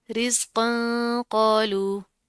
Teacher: तनवीन है और हुरूफ इख्फ़ा में से क़ाफ हो रहा है, तो यहाँ पर हम इख्फ़ा करेंगे, मोटा इख्फ़ा करेंगे। क्यों? क्योंकि क़ाफ मोटे हरूफ में से है।